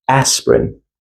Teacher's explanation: so the letter I is generally not pronounced